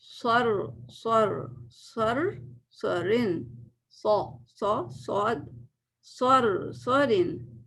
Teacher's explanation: رو بھی موٹا ہوگا، رو کے وقت بھی زبان پیچھے سے اٹھی رہنی چاہیے، کیونکہ رو جب ساکن ہوتا ہے اور اس کے پیچھے زبر ہوتا ہے نا، تو رو کو ہم موٹا پڑھتے ہیں.